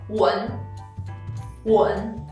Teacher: You couldn't hear the last sound n, so it's 文. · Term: loss of sound